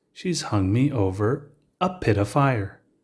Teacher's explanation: of of and the f sound in fire is so similar the v sound drops off and you are just left with the uh sound and we mash it all together to make pitifier that brings · the t turns into a d sound and because the sound of of and the f sound in fire is so similar the v sound drops off and you are just left with the uh sound and we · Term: connected speech